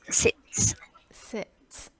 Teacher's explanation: you don't need to put h nor you don't need to make it longer like seeds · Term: short e sound